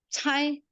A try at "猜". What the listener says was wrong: Masih agak naik, Bu. Cai. Eh, jadi AI-nya itu ditekan ya.